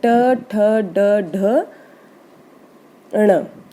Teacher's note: मूर्धन्य जीभ मुड़कर बोलती है, इसमें जो जीभ है वो मुड़कर ऊपर तालू पे टच करती है, उसे मूर्धन्य बोलते हैं। पूरा टवर्ग ऐसे ही बोला जाता है, ट ठ ड ढ ण।